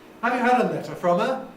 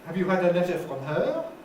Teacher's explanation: Nucleus on letter, because from her is preposition and pronoun. I did a fall on the first one, a rise on the second one.